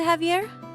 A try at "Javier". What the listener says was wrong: Oh, Javier. It's pronounced like an H.